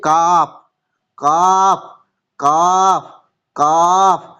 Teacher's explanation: জিবের গোড়া হতে একটু আগ বাড়িয়ে তার বরাবর উপরের তালুর সাথে লাগিয়ে উচ্চারিত হয়